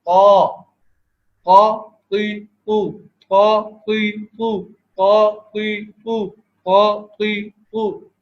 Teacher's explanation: اس میں حلق تنگ ہو جایا کرتا ہے اور زبان میں کرو آ جائے گا